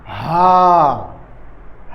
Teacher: سینہ کی طرف سے جو حلق ہے وہاں سے نکالنا ہے